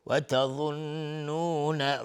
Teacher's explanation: ضاد از حروف استعلاء غلیظ تلفظ میشه